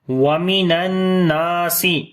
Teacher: نون کے اوپر شادہ غنہ کریں گے اور لمبا بھی کریں گے، الف مدہ ہے